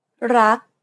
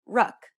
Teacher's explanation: Do you notice how air in the final K sound is not expelled? This is true for all final consonants in Thai words. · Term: unreleased